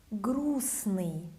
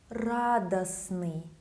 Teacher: You hear I don't pronounce that letter T. T in Russian, I'm sorry.